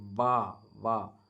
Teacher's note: மேல்வாய் பல்லை கீழ் உதடு பொருந்துவது வா கீழ் உதடு பல்லு வந்து பொருந்தும் வா அப்படின்னு ரன்னகரம் ர வல்லினம்